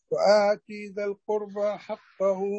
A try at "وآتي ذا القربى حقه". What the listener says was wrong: لا لا لا لا لا لا لا، هي كسرة تاء مثنى فوقانية مكسورة، فلا تشبعها لتصل إلى الياء. وآتي ذا، وآتي ذا، وآتي ذا. لا لا لا لا لا لا، الركنة دي مش عايزينها، مش وآتي، لا، وآتي ذا، وآتي ذا.